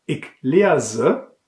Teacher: Steht das S zwischen zwei Vokalen, wie bei ik leerse, dann wird das S stimmhaft ausgesprochen, wie bei summen.